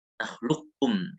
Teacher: yang lebih utama dibacanya itu adalah idgham kamil langsung ke kaf